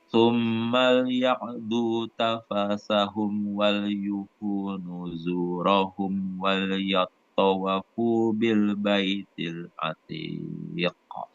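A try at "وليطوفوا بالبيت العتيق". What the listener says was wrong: Ulang, wal yattawafu, wawnya bertas. Enggak pakai waw.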